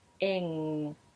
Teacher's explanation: You'll notice that he's using the tip of the tongue high up on the alveolar ridge, closing it at the front, in, whereas I use the back of the tongue high, closing it off at the back